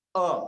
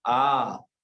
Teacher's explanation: अ plus अ, और जितना बड़ा हुआ वो हो गया आ। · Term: दो मात्रिक